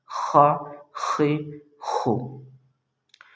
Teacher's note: خا یہ حلق کے منہ کی طرف والے حصے سے ادا ہوتا ہے